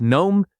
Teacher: The G at the beginning disappears entirely. It sounds like gnome.